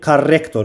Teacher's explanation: Ümumiyyətlə tor hecası vurğu qəbul eləmir.